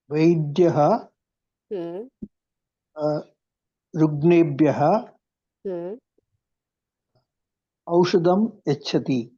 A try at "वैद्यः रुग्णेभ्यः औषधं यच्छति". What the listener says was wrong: उत्तमं महोदय. सम्यक् कृतवान्.